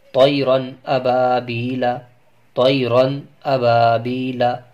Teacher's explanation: دوستوں، اس میں سمجھنے کی بات یہ ہے کہ تنوین یا نون ساکن کے بعد اگر ان 6 حرفوں میں سے، یعنی حمزہ، ہا، عین، حا، غین، خا، ان 6 حرفوں میں سے کوئی بھی حرف آ جائے تو وہاں پر تنوین یا نون ساکن کا اظہار ہوگا، یعنی اس تنوین یا نون ساکن کو ظاہر کر کے بلا غنہ کے جلد پڑھیں گے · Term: اظہار حلقی